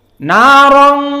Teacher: tanwin bertemu dengan ta sama ikhfa, dan makhrajnya juga dari khaysum, dari hidung